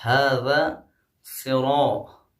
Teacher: آپ نے دیکھا صراط را کے اوپر الف آیا ہے تو یہاں پہ تفخیم والا قاعدہ لاگو ہوگا، یعنی را کو موٹا پڑھیں گے